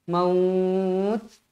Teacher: huruf ta tu mestilah Hamas berangin